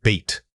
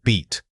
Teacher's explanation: you need to hold that e sound for a noticeable length of time. Focus on spreading your lips into a wide smile while making the air flow steadily.